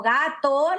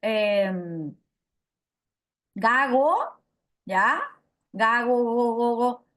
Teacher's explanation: No llega a cerrarse, no llega a cortarse la salida del aire porque la pronuncio, en vez de pronunciar una oclusiva velar, pronuncio una fricativa velar